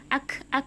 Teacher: Sedangkan kaf, pangkal lidah juga bertemu dengan langit-langit mulut yang bagian maju sedikit, yang bagian agak keras, antara lunak dengan keras.